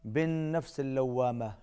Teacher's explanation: ولا کے اوپر بھی چھوٹی مد ہے، کھینچ کے پڑھیں گے، اقسم، قاف پر قلقلہ ہوگا، بالنفس اللوامہ، نون مشدد ہے، غنہ ہوگا، باز ناک میں جائے گی۔